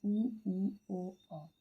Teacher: वृत्तामुखी स्वर में उ, ओ। तो इनमें जो है होंठ आपके गोलाकार आकृति में होते हैं